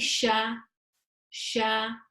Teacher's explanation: It's pronounced from the middle of the tongue, raised up towards the upper palate. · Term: sheen